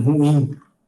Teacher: O som mais forte é o final.